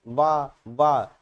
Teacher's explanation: जब आप बोलेंगे ना वाह वाह, तो देखिए क्या हो रहा है, आपके होंठ जो होते हैं वो दांत में लग रहे हैं। आप बिना दांत में होंठ को टच कराए वाह नहीं बोल सकते हैं। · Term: दंतोष्ठ